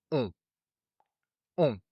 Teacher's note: So with AN and EN, which are pronounced the exact same way, the mouth is more open, so on. While with ON, you pucker your lips more, so it sounds like on, and that's it.